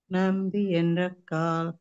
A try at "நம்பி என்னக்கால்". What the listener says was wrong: మీరు ఎన్రక్కాల్ అని చదివారు, దాన్ని ఎన్నక్కాల్ నాకు నావత్తుగా చదవాలి. నంబి ఎన్నక్కాల్.